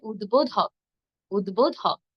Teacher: উদ্বোধকের মাঝে রয়েছে দ অল্প প্রাণ, এরপর ধ মহাপ্রাণ।